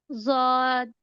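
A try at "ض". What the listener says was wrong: दौद, not स्वाद, ठीक है, दौद, no sister, not ज्वाद, दौद, दाद पढ़ेंगे, दौद हैवी साउंड के साथ, दौद, जुआद नहीं है, जुआद उर्दू में होता है, हम अरेबिक सीख रहे हैं ना, दौद।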